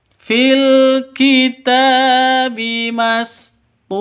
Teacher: Kitabi ta panjang 2 ketukan karena ada alif diawali dengan fathah, mad asli atau mad tabi'i.